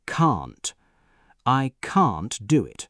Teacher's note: In British English, can't has a long ah sound